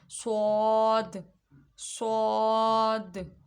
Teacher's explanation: صاد ایک تو حروف صفیریہ میں سے ہے، اس میں سیٹی کی آواز آنی چاہیے، اور دوسرا یہ حروف مستعلیہ میں سے ہے، اس کو ہم موٹا پڑھیں گے۔